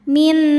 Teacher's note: Cara bacanya nun pertama dileburkan ke nun kedua disertai bunyi dengung. Jadi bunyinya m yang ditahan min boleh juga disebut dengan idgham mutamasilain karena dua huruf yang sama makhraj dan sifatnya bertemu ya. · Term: idgham bighunah